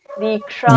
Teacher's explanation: दीक्षाम दी थोड़ा दीर्घ है। दीक्षाम दोनों जगह पे दीक्षा।